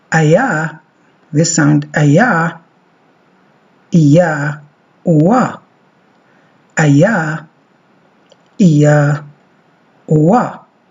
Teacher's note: The centering diphthongs glide towards the schwa.